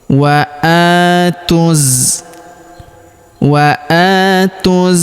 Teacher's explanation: Dan huruf tan-nya juga kita rubah menjadi sukun sehingga kita baca menjadi ha sukun. Jadi bukan dibaca ta sukun tapi menjadi ha sukun karena ini adalah ta marbutah. · Kemudian huruf tu langsung sambung masuk, lompat ke huruf za yang berharokat tasydid, kita tahan dan tekan ya. Alifnya di depan sini tidak dianggap, wawunya juga tidak dibaca, dan alif lamnya juga tidak dibaca ya, alif lam syamsiyah.